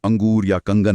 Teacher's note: अनुस्वार मतलब बिंदु का उच्चारण करते समय हवा सिर्फ नाक से निकलती है, जैसे अंगूर या कंगन में।